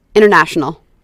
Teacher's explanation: os americanos tendem a omitir o T, o som do T, quando ele está após a letra N